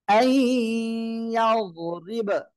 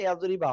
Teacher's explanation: আই ইয়াযরিব, আপনি ওয়াকফ করলে কিন্তু বা আবার সাকিন হয়ে যাচ্ছে, এজন্য কলকলা।